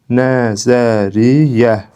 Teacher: Nəzəriyyə sözünə də həmçinin fikir versək, bu sözün düzgün tələffüzü nəzəriyyə formasındadır. Yəni qoşa y samitindən biri tələffüz zamanı düşübdür.